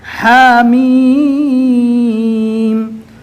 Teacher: ہا کو کم یعنی 1 الف کے برابر اور میم کو 3 یا 4 الف کے برابر کھینچ کر پڑھنا ہے